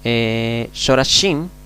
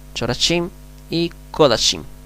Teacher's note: En la palabra Shorashim, Shorashim, aquí debajo de la Shin tenemos una O, Shorashim y Kodashim. En esas palabras, en la primera sílaba, la Kametz es O.